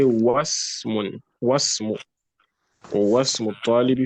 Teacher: But if there's something before it that you are pronouncing, like wa, in that case, you will not pronounce the alif of ism, nor would you pronounce the alif of ibn. You just go from the wa or whatever letter or word comes before it straight to the sin sukun in the ism. So you say wasmu, or wasmu talibi, for example, and then you also go straight to the ba sukun and say wabnu.